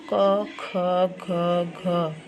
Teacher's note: क वर्ग का उच्चारण कंठ से होते हैं